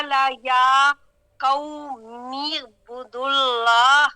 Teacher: یعنی میم کو عین سے ملایا ہے